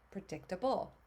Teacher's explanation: I like to use the able suffix because it's always pronounced able with that schwa sound. That A makes that sound.